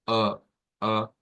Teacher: algunas palabras y es que el sonido de la a media el sonido de la a media abierta